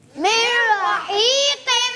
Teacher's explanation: جی ہاں پیارے بچوں یہاں پر آپ دیکھیے نون را کے اندر مل رہا ہے, اس کو کہتے ہیں ادغام بلا غنہ, کہ نون را میں ملا اور ایسا ملا کہ اس کی آواز نہیں آئے گی